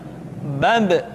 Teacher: Ketika mati, maka terdengar suara pantulan.